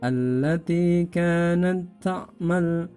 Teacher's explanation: Ta yang di berharokat sukun ini dilebur kepada ta yang ada depannya.